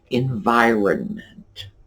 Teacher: that middle N, we just barely touch on it.